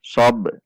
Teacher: Ba sukun ketika dibaca maka ada pantulan karena huruf ba termasuk huruf qalqalah.